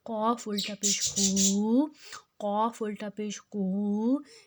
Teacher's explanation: اب قاف جو ہے وہ موٹا حروف ہے، الٹا پیش کو ہم نے دو حرکت جتنا لمبا کرنا ہے۔